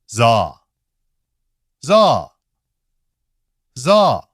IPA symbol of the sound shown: ʒa